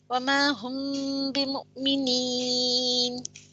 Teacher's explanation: میم ساکن آتے ہیں اس کے بعد با آتا ہے تو کیا ہوتا ہے وہاں اخفا و شفوی ہوتی ہے، اس لیے غنہ کرنا ہے، کھینچ کا پڑھنا ہے.